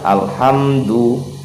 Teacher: ia diizharkan sehingga dibaca jelas tanpa dengung, tanpa pantulan. Jangan yang keliru itu alham, ada pantulan, karena lam bukan termasuk dalam huruf qalqalah. · huruf H ini huruf H kecil, jadi hamas juga, dia mengalirkan angin juga, dia berada di tengah-tengah tenggorokan juga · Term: izhar komariah